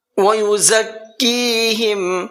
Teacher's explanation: زا کا پروناؤنسیشن جو ہے اس کے اندر سختی ہوتی ہے تھوڑی سی، اور دونوں دانتوں کو ٹچ کر کے پیچھے سے زبان لگائی جاتی ہے